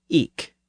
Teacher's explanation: in parts of eastern England, especially around Norfolk, people pronounced that word with a hard K sound at the end. So they said eke, usually spelled I-K.